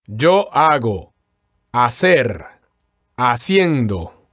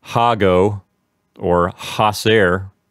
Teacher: here we want to make sure that they don't pronounce the H at the beginning of these verbs